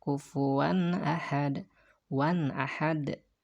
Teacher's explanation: nggak boleh wan didengungkan di pangkal hidung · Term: izhar